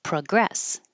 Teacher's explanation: now the p o is uh because it's not stressed